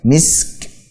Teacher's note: Kaf yang memiliki sifat hams. Dan syiddahnya. Jelaskan syiddahnya kuat.